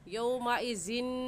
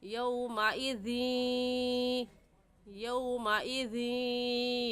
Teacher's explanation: तो इस लफ्ज़ को यौमाइज़िन कहना गलत होगा और सही ये है कि हम ज़ाल को या के साथ मिलाएंगे क्योंकि इदगाम हो रहा है